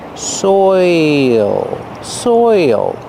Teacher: Your mouth has to open a little bit to make the dark L, and there's an extra sound.